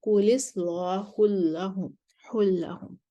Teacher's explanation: کل اصلاح پر نقل الحرکہ اور تغلیظ اللام کریں گے